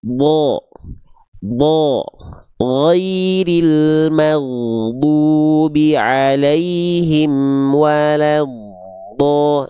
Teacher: Huruf tebal itu intinya karakternya. Ketika dia berharokat fathah pasti terdengar tidak clear vokal A, tapi condong ada vokal kayak O-nya.